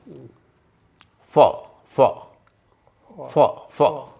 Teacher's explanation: होंठ और दांत ये जब मिलते हैं तो अंग्रेजी की फ ध्वनि होती है। अब कौन सा होंठ और कौन सा दांत, ऊपर का दांत और नीचे का होंठ।